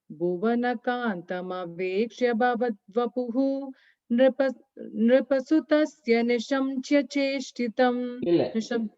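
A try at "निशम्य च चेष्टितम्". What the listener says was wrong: Nishamya. Yeah, nishamya cha cheshtitam. Pause but I think when you are saying it, the ya is not audible, at least when you said it.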